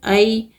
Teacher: ای میں یائے لین ہے، اس کو نرمی اور جلدی کے ساتھ پڑھنا ہے